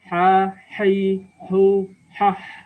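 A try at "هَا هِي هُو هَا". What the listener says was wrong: Ya, bagus. Disambung.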